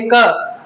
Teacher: क के उच्चारण के लिए जब हम बोलेंगे क, तो पीछे अ की साउंड आएगी